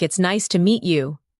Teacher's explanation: When you listen to sentences like, "It's nice to meet you." Notice the rise and fall of the tone. The voice goes up slightly at nice and falls gently at you.